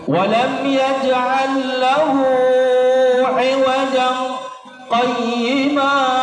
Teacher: Jadi berhenti sejenak, tahan nafas. Itu saktah namanya.